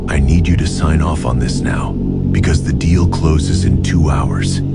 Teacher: Your voice should drop at the end, not rise. Why? Because a downward tone signals finality and authority. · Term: falling tone